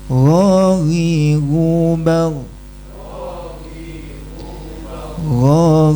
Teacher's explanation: dari ujung tenggorokan atau tenggorokan yang paling atas pertama huruf ghain Ghu ghi ghu suaranya berjalan lembut.